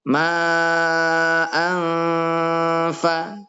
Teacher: bacaan Ikhfa nunnya disamarkan